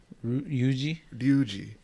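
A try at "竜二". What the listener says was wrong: You gotta pronounce the R too. You could pronounce it like a D, really.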